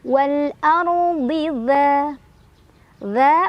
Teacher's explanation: Wal ardi dza mad tabi'i karena ada alif sebelumnya ada fathah di dzal, cara bacanya panjang 2 harokat